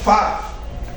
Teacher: fa es un sonido dentilabial o labiodental, que es lo mismo.